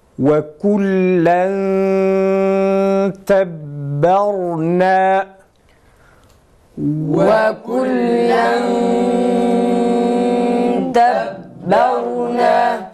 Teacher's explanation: Ve kullen tebberna tenvindeki nunu gizliyoruz. Dilimiz ağız bölgesinden herhangi bir tarafa çarpmadan, değmeden okuyoruz. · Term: İhfa